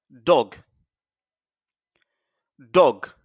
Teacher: vous voyez la langue touche le palais